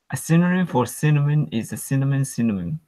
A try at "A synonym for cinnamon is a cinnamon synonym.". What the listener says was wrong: You know what I heard there is when you said the last synonym, you said an N, and I heard that, and it's very noticeable to a native, even though you did very well.